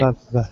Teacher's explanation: That means that your mouth has to stop the air partially. So in this case, your lip touches your teeth. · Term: fricative